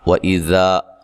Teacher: حمزہ کو تحقیق سے، ذال کو نرم ادا کرنا ہے